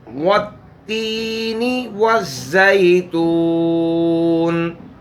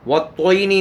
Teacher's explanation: تو بہرحال والتینی والزیتون، والتوینی نہیں پڑھنا، تا کو تو سے نہیں بدلنا، تا ہی پڑھنی ہے